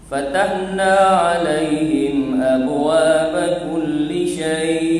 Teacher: Mad lin ni kita boleh waqaf sama dengan mat arif disukun 2 atau 4 atau 6.